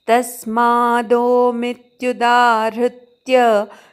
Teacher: तस्माद मधल्या त वर आघात